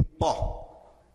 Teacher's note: O som do pi é sempre o som da letra P, como em pó. É o P, é explosivo, é bilabial e explosivo, ok? Próxima é Rô.